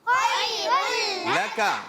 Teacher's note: خا کو پر رکھیں گے پیارے بچوں, حرف لین ہے, نرمی سے ادا کریں گے. اب یہاں را تنوین کے بعد لام آنے کی وجہ سے یہاں پر ادغام کا قاعدہ ہوگا, بغیر غننے کے ادغام کریں گے.